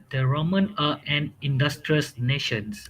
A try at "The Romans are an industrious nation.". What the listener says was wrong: Romans, remember, if there is S or D at the end of word, you must pronounce it clearly.